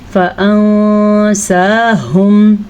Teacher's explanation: نون کی آواز کو چھپانا ہے ہم نے اور ہا کی آواز کو چھاتی سے نکالنا ہے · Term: اخفاء